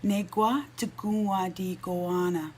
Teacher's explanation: And this one's a little bit tricky because here we have that K, which is actually pronounced as a G sound